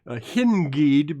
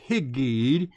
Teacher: But what's happened here is the nun, being a soft letter, becomes another gimel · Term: assimilate